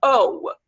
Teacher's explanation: o is actually a diphthong, because the pure O is not found in English usually